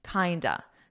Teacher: So we take of and we pronounce it more of a ah ah and then we just combine it together.